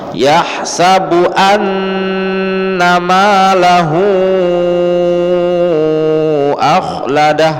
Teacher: huruf nun bertasydid maka dia dibaca dua ketukan atau dua harokat, berarti dia dengung ya, dengung selama 2 harokat.